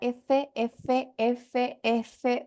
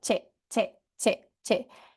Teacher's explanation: en la F hay fricción y en la che no